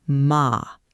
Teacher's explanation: Spoken flatly with no change in pitch